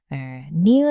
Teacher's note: 그 소리가 날 때 진짜 혀가 이렇게 되죠 여러분. 니은 할 때도 혀 끝이 구부러져서 입천장에 닿는 느낌이 나는 거고요.